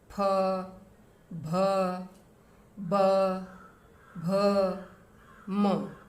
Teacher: जब हम बोलते हैं तो ओष्ठ से मिलते हैं, अलग होते हैं, वहाँ से इनकी उच्चारण स्थान होता है। और इसमें भी जो म वर्ण है उसका उच्चारण ओष्ठ के साथ नासिका भी होता है। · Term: प वर्ग